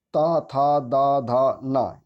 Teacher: ता वर्ग जो होता है टोटल दंत में आता है